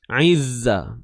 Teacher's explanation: Huruf Zai tidak perlu keluarkan hujung lidah. Duduk dalam je. Okay, huruf Zai duduk dalam.